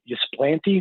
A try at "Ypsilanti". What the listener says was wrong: It's Ypsilanti. the Y is an I.